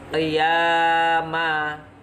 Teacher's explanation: Kemudian qiyama, ya-nya ya, hukum bacaannya dalam mat tabi'i fathah bertemu alif dibaca panjang 2 harokat